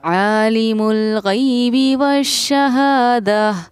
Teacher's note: یہاں یا ساکینہ سے پہلے زبر تو یا حروف لین ہے، نرم آواز کے ساتھ جلدی ادا کریں گے